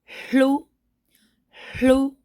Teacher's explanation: So if you're to elongate that sound, really enunciate that, you'll hear that air actually coming out first before you even give voice to the la, la, la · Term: pre-aspiration